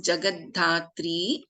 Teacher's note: we have अल्पप्राण द as well एस महाप्राण ध in this